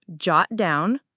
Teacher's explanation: The main stress is on jot.